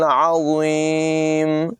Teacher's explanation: आइन की आवाज़ हलक़ के दरमियान वाले हिस्से से अदा होगी